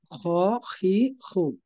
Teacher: 3 নম্বর মাখরাজ হলকের শেষ ভাগ থেকে উচ্চারিত হয়।